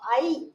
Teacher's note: வாய் திறக்கும் முயற்சியுடன் நாக்கின் அடி ஓரமானது மேல்வாய் பல்லை பொருந்தும் முயற்சியால் பிறக்குது